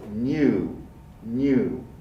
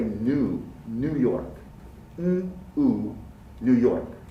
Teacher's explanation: for british english speakers would include the glide